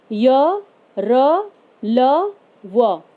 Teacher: अंतःस्थ व्यंजन स्वर तथा व्यंजन के बीच में स्थित होने के कारण इन्हें अंतःस्थ कहा जाता है। इनके उच्चारण में जीभ मुंह के किसी भाग को पूरी तरह से स्पर्श नहीं करती।